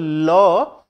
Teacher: আমরা যদি ল বলি ল উচ্চারণ কর একটু ভালোভাবে বল ল দেখবে জিহবা আমাদের তালুতে লেগে যাচ্ছে। লাগার পর তার দুটো দিক জিবার দুটো দিক থেকে বাতাস বেরিয়ে আছে। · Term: পার্সিক ধ্বনি, পার্শ্বিক ধ্বনি